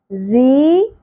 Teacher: زا کو شدت کے ساتھ اور سیٹی کے ساتھ ادا کرتے ہیں